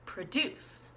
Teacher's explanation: the second one was the verb produced because the accent was on the second syllable